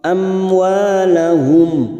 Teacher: Wa ada fathah bertemu alif 2 harokat.